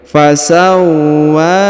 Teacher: Huruf wa ditahan dan ditekan lalu dipanjangkan 2 harokat karena di atasnya terdapat alif kecil.